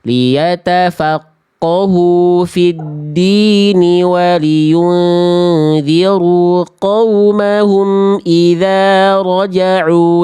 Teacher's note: Kalau misalnya Bunda mau lanjut nggak berhenti di din, maka dinya cukup 2 harokat, kasroh ketemu ya sukun. Din ini dibaca lebih dari 2 harokat kalau berhenti.